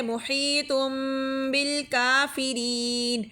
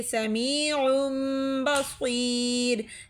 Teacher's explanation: تنوین کے بعد با آ گیا ہے تو ہم نے میم میں تبدیل کر دیا